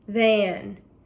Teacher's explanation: since TH makes our vocal cords move or vibrate, it is called a voiced sound. And we draw a line through the TH in these words to show that they are voiced when we're coding.